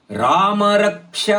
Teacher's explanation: ರಾಮ ರ ದೀರ್ಘ ಪದ ಮ ರಸ್ವ ರಕ್ಷ ರ ಮೇಲೆ ಅಘಾತ ಯಾಕಂದ್ರೆ ಮುಂದಿನ ಪದ ಕ್ಷ